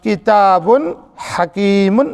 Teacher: بچوں اس کلمہ کتاب حکیم میں اظہار کا قاعدہ با دو پیش بن، یعنی با کے اوپر ہے، با کی آواز کو یعنی بن کی جو آواز ہے اسے ہمیں ظاہر کر کے پڑھنا ہے، اس میں گننا نہیں کرنا ہے